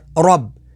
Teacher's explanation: را کے اوپر زبر ہے تو را کو پور یعنی موٹا پڑھیں گے، اور با کے اوپر تشدید ہے تو تشدید والے حرف کو 2 دفعہ پڑھیں گے۔